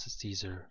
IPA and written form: ˈsiːzər (Caesar)